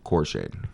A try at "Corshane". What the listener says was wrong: Corshade. There's an N in there.